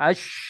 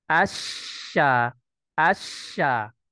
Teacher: melfazkan huruf syin itu Kan berasal dari pertengahan ya wastul lisan dari pertengahan lidah menuju langit-langit atas